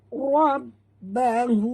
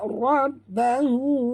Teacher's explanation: ra sini tebal dan tekan pada ba, di atas ba ada tasydid. Rabbahu, bukan rabbuhu ya, rabbahu.